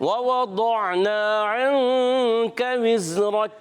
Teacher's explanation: दोनों वाव की अदायगी होगी होंठों की गोलाई से। पहला वाव भी दूसरा भी।